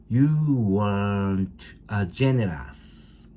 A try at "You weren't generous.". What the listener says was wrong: No R.